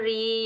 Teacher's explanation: रा के नीचे जेर आने की वजह से बारीक पढ़ेंगे